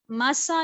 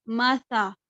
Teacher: سا کو زیادہ سخت نہیں کرنا، مسا نہیں پڑھنا، مسا. سا کو نرم رکھنا ہے. یعنی نرم رکھنے کا طریقہ کیا تھا کہ اپنی زبان کو دونوں دانتوں کے درمیان میں رکھنا ہے